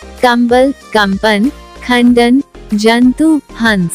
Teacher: अनुस्वार पूर्ण अनुनासिक नेजल साउंड ध्वनि है। इस ध्वनि के उच्चारण में मुंह बंद कर नाक से पूरी सांस ली जाती है।